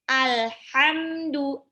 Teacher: pengucapannya miring setelah keluar dari ujung lidah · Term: inhiraf